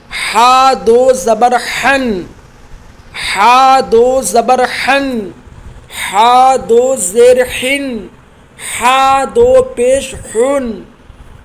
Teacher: بڑا ہا جو ہوتا ہے وہ بیچ حلق سے ادا ہوتا ہے۔ یاد رکھیے گا آپ لوگ، ہا اور ہا میں بڑا فرق ہے، چھوٹا ہا اور بڑا ہا یہ دونوں الگ الگ حرف ہیں، لہٰذا ان کو ادا کرنے کا مخرج بھی الگ الگ ہے۔